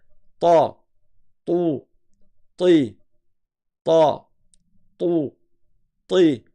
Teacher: C'est ta. La langue à l'arrière, elle remonte.